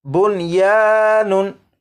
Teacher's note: होना तो ये चाहिए था कि नून साकिन को वाव में इदगाम करते, लेकिन नून साकिन और वाव क्योंकि एक लफ्ज़ में इकट्ठे हैं इसलिए यहाँ पर इदगाम नहीं करेंगे